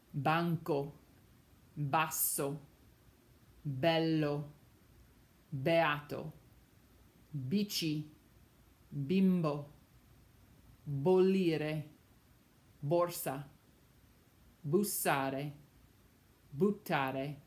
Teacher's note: in those words with the double consonants, you could hear the slight pause in between the consonants